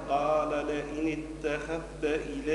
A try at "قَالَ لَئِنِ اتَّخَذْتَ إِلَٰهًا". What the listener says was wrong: لا ازاي ما تنطقهاش ازاي باش ندخلوها في التاء ندغموها. قال دخلناها أدغمناها في التاء.